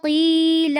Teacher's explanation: قی میں قاف کو پر کرنا ہے اور یہاں پر مد اصلی بھی کرنی ہے